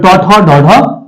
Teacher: তা হলো ট বর্গের বর্ণ হলো ট, ঠ, ড, ঢ, মূর্ধন্য ন। এই বর্ণগুলি মূর্ধাতে স্পর্শ করে উচ্চারিত হয় বলে এগুলিকে বলা হয় মূর্ধন্য বর্ণ